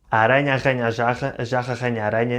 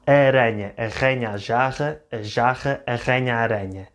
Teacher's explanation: mixes these two R sounds, the harder rrr R and the softer re R